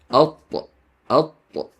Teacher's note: You make this heavy sound by lifting the back of your tongue, not by shaping your lips.